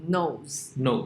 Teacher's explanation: So here, this serves as an example of a conditioned sound change because only word final schwa was deleted. Not in all cases.